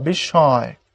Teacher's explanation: এখানে একটা নাকের প্রভাব পড়বে, যে এটা বিস্ময়। দেখো পরে চন্দ্রবিন্দু যেটা, এটা এটা বিস্ময় হবে না, বিস্ময় হবে না, এটা হবে বিস্ময়।